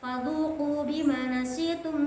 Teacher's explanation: bima, ma-nya itu dibaca panjang mad tabi'i